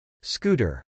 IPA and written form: skˈutɚ (scooter)